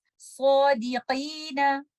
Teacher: In this example, Sod is a letter of isti'ala. So we will recite this mad with tafkhim. · So we will recite this mad with tafkhim. Letter of qaf is a letter of isti'ala. Although this has a kasra, which is at the lowest level of tafkhim, but still it is a tafkhim letter. Don't make it ki, because this is a kaf.